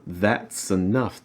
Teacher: The S is going to slide onto the enough. Enough. That's enough. · Notice here you're linking the that's with the ah sound.